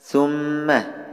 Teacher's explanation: Thumma, ini hukum bacaan gunnah musyaddadah. Cara bacanya didengungkan 2 harokat.